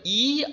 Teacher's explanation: জীভ তখন পুরো সামনের দিকে থাকে মানে ঠিক দন্ত মূলে ঢেকে থাকে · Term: উচ্চ স্বরধ্বনি